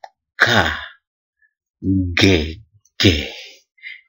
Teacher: dorsovelar dorsofeler ini dikatakan seperti itu oleh karena terjadinya pertemuan antara pangkal lidah dengan langit-langit keras kita jadi pangkal lidah kita bertemu dengan langit-langit keras